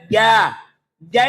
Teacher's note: enggak ada udaranya yang keluar loh